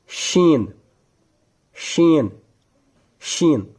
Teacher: शीन का मखारिज है जुबान का दरमियानी हिस्सा तालों का दरमियानी · شین کا مخارج ہے زبان کا درمیانی حصہ تالوں کا درمیانی حصہ